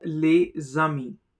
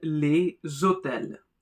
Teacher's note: the s gets connected with a and produces a zed sound